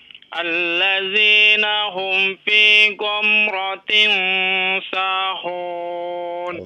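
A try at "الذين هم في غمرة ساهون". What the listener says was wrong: Ghamra ya, bukan go, ghamra.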